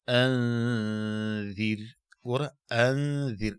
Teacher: نو دا نون به په ذال کې پټه او دلته به په مقدار د دو حرکتين غنه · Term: اخفا